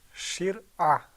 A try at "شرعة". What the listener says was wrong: do you feel that it's muraqqaq? I noticed that when you were saying it, you're pulling the corners of your mouth back a little bit. And that's another way to tell. Shir'ah.